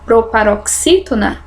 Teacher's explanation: a própria palavra proparoxítona é uma proparoxítona porque a sílaba forte é a minha antepenúltima